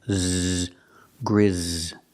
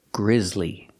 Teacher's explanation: The S is pronounced with the Z sound, like zebra, with vibration, z, grizz. Grizzly.